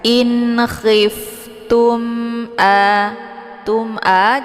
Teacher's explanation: mimnya dibunyikan secara jelas karena mim sukun ketemu Hamzah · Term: izhar syafawi